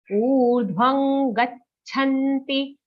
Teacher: Urdhvam, okay, dirgha u sound, not urdhvam. Urdhvam, anga sound in the anuswar, because the next letter ga is in the ka group of letters, and the ka group anunasik ka kha ga gha nga.